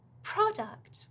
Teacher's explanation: so the stresses on the first syllable